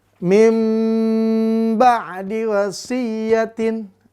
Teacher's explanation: Nun ketemu ba, maka dibalikan bunyi nunnya jadi huruf mim. Durasi ditambah dengan dengung 2-3 harokat.